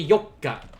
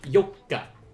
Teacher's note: there's a double consonant there yoka so uh that just like with mikka you kind of pause or choke on that sound a little bit